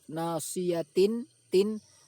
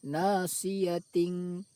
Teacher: suara tanwin tersebut dibaca samar, tidak dibaca izhar jelas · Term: ikhfa